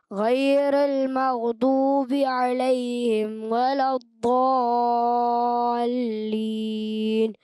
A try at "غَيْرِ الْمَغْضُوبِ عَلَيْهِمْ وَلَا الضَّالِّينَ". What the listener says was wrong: اچھا غیرل تھوڑا سا را کو اور باریک کریں. غیر المغضوب علیہم ولا الضالین.